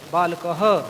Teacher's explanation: जहाँ बहुवचन विसर्ग है वहाँ पर हा की ध्वनि थोड़ी अधिक स्पष्ट करेंगे, जोर से बोलेंगे, थोड़ा दीर्घ कर देंगे उसे। तो इससे बहुवचन रूप और ह्रस्व रूप में अंतर स्पष्ट हो जाएगा।